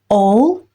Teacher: Yəni, A-lı hərf birləşməsini uzun O kimi tələffüz edirik.